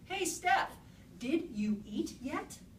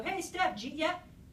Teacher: Did you eat yet becomes jeet yet.